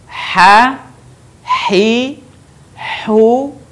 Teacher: huruf ini dikeluarkan dari tengah tenggorokan kita ketika dilafalkan persis seperti kita melafalkan kata ayah Syahrini gitu cara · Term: huruf H